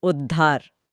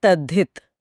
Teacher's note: जब आधे त के बाद ह आता है तो त बन जाता है आधा द और ह बदल जाता है ध में। दोनों मिलकर ध का निर्माण करते हैं।